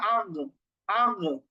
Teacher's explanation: তো এই গইনের উপর যদি আমরা সুকুন দিয়ে টেস্ট করি যে আসলে কোথায় থেকে গইনটা উচ্চারণ হচ্ছে, তাহলেই বুঝতে পারবো আমরা যে গইন উচ্চারণ হচ্ছে গলার একবারে শুরু থেকে, মানে কণ্ঠনালীর শেষ থেকে। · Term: গইন খ